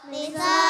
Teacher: Yang dinamakan mat wajib muttasil ialah mat bertemu hamzah dalam satu kalimat dan panjangnya 2,5 alif atau 5 harokat